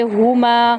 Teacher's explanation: بو کو لمبا کریں گے اور ما کو لمبا کریں گے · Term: حروف مدہ